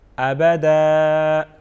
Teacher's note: آخری حرف کو ہم ایک الف کے برابر کھینچ کے پڑھیں گے